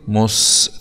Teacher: سين سكون مع الصفير